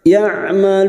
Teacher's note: huruf Ain sukun yang memiliki sifat tawasud dan jahar Maka jangan samakan dengan Hamzah